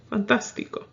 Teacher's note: You will put the accent on that third to the last.